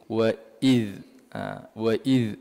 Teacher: Jadi wa iz, wa iz ada keluar sedikit lidah lah.